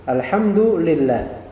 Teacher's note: Lafal jalalah Allah dibaca di sini lamnya muraqqaqoqah tipis. Kenapa? Karena sebelumnya kasrah lillah lam lillah lam alistiqaq. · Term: muraqqaqah tipis